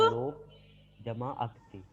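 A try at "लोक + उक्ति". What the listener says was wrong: लोक जमा उक्ति। उक्ति, अक्ति नहीं होगा, उक्ति। लोक जमा उक्ति।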